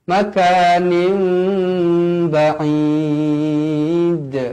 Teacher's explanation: Hukumnya di sini iqlab. Iqlab dibaca dengan dua harakat. Bibir sekadar bersentuhan.